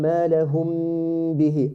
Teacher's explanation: Apply the ghunna here. Okay, we have mim sakina, then we have letter ba, and ikhfa shafawi. Apply it with the 2 haraka.